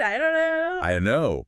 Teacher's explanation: Ah, the digi in don't just completely vanishes, doesn't it? And the vowel sound in don't gets really weak. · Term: big reduction